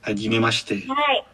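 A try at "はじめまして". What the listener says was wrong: Hajime Mashite, jadi lebih nggak terlalu jelas sh-nya gitu.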